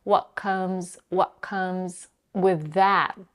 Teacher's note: she stops her voice when she says what. The back of her tongue is already up preparing to touch the soft palate for the k sound. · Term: glottal stop